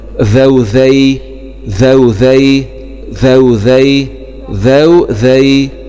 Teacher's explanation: انتبه لمخرج الذال طرف اللسان مع اطراف الثنايا العليا.